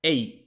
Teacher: la E puede hacer EI y sonar prácticamente como un diptongo